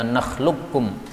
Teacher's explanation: Nakhluqkum, qafnya diubah menjadi kaf, sehingga tidak boleh nakhluqakum, salah. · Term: idgham